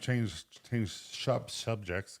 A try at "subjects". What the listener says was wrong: Subject. H. There's no H in subjects.